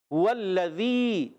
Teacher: واو کو لام سے ملانا ہے، لام کو، لام مشدد ہے، ذرا رک کر ادا کریں گے لام کو